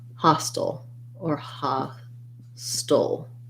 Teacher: hostile with a schwa at the end. Almost no vowel there, kind of going right from the st to the ul, stol, hostile.